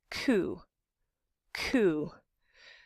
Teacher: roof of your mouth ku ku no K is the voiceless your vocal folds are not vibrating which you can feel if you touch your Adam's apple or the top of your head and it's velar meaning that · And it's velar, meaning that the back of your tongue is touching that squishy part at the back of the roof of your mouth. It's where it gets soft, the soft palate it's sometimes called.